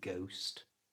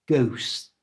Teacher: to say this correctly first don't pronounce the h